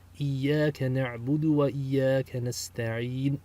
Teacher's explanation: So nasta'in should actually be nasta'inu with a dhamma on the end if you pronounce the entire verb. But since we're stopping, we stop with the sukun in recitation.